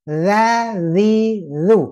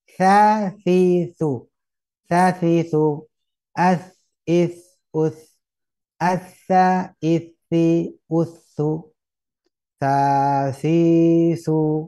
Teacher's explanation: Jadi kalau untuk za tidak hembus. Nah, sa hembus. za, zi, zu.